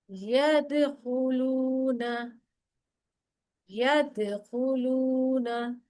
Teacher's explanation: दाल के ऊपर कलकला होगा